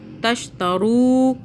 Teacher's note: رو کو کھینچا، واو ساکن ہے، یہ مدہ ہو رہی ہے ، واو اس سے پہلے پیش آ رہا ہے، بآیاتی، آ